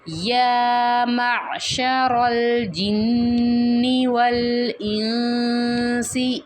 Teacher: یا کی جو کھڑی زبر ہے اسے کھینچ کے پڑھیں گے، نون مشدد آ رہا ہے، یہاں پہ غنہ کریں گے، اور نون ساکن کے بعد دیکھیں گے یہ سین ہے، یہ حروف حلقی میں سے نہیں ہے، تو یہاں پہ ہم اخفا کریں گے، یعنی کہ آواز کو نون کی ناک میں 1 سیکنڈ کے لیے چھپا کے پڑھیں گے۔